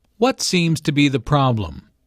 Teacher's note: notice that the intonation Falls at the end of the question the doctor wants information not a yes no answer